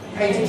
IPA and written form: ˈpeɪntɪd (painted)